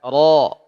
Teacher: Ujung lidah bertemu dengan gusi. Ya, gusi yang mendekati langit-langit. Ya, lidahnya ujungnya yang kena, digetarkan. Ro. Karena ini tebal, maka angkat pangkal lidahnya. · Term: huruf ro